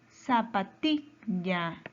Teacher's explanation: Su mayor fuerza de voz está en ti. Es una palabra grave.